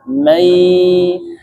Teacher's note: Jadi ya-nya nun sukunnya masuk ke huruf ya dan dia masuk hidung juga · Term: idgham bi ghunnah